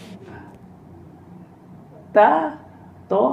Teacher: hujung lidah jumpa dengan tempat tumbuh gigi seri atas